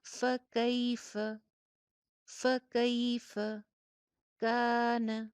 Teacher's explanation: یالین، فا کے اوپر زبر، لاسٹ والی فا پہ بھی زبر، دونوں فا کی حرکت چھوٹی چھوٹی سی اور درمیان میں یائے لین ، فکیف، فکیف کان، کان کاف کے ساتھ الف مدہ نظر